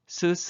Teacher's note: 혀 끝과 윗 잇몸 사이를 좁혀서 그 사이에 공기가 강하게 흘러가며 나는 소리입니다 쓰 이렇게 좁혀진 발음 기간 사이를 공기가 마찰 시키며 내는 소리라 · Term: 마찰음